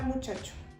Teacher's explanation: semioclusivas que es cuando se cierra por completo el órgano articulador Pero hay un desliz de aire